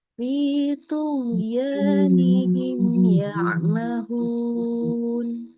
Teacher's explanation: Bertemu dengan huruf ya, maka mimnya dibaca jelas. Seluruh sifatnya mim jelas. Kita nggak menambahkan gunnah di sana. Ya, ini nama hukum di situ disebut sebagai izhar syafawi.